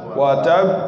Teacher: حرف مشدد موقوف عليه مع القلقلة